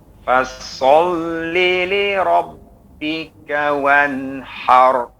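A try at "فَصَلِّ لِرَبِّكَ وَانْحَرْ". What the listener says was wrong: Huruf ra-nya tebalkan. Ha, har. Suara dari tengah tenggorokan kemudian ke gusi. Har. Fasalli.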